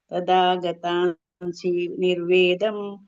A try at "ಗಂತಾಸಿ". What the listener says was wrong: ಅದು ಗತಾಸಿ ಅಲ್ಲ ಮಾತಾಜಿ, ಅಲ್ಲಿ ಗಂತಾಸಿ ಅನುನಾಸಿಕ ಇದೆ. ಗಂತಾಸಿ ಅಂತ ಹೇಳ್ಬೇಕು.